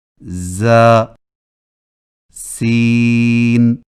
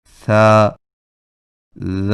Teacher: بعض کو سیٹی جیسی آواز کے ساتھ پڑھا جاتا ہے، جیسے ز سین. اور بعض کو نرمی کے ساتھ بغیر سیٹی جیسی آواز کے پڑھا جاتا ہے